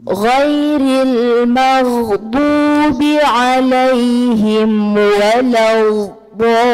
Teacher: الغين يجري فيها الصوت ولا يجري فيها النفس. لولا الجهر لكان الغين خاء.